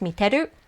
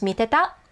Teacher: in everyday casual conversational Japanese, they usually drop the e. So it's teru and tenai. It's not te-iru and te-inai, it's just teru and tenai.